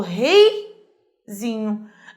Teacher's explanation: Eu tenho um ditongo decrescente, o E é mais forte que o I